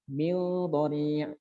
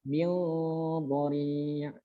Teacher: Nun mati bertemu dhad, di situ ada ikhfa.